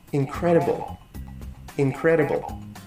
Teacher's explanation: second syllable is the loudest it means that has the stress